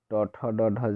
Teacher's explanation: ट ठ ड ढ जो होता है मूर्धन्य ध्वनियाँ होती हैं